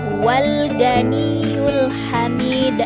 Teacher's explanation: dalam Qalqalah kubra ini cara membacanya lebih memantul dibandingkan kalkalah Sugra